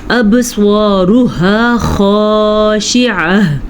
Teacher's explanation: سواد کو پر پڑھیں گے اور با کا جو قلقلہ ہے اس کو ضرور ادا کریں گے